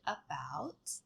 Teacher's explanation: It's a mid central vowel sound. It's a schwah if you've heard of it. It's unrounded and laughs and it's like the a in the word about.